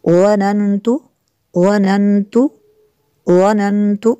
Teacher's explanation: इन्नी वनन्तु, वनन्तु, वनन्तु, नून साकिन है, नून साकिन के बाद ता है हुरूफ़ इख़्फ़ा में से, तो यहाँ पे इख़्फ़ा होगा यानी गुन्ना करेंगे